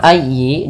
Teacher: dalam ayi ditekan huruf ya karena dia tasdid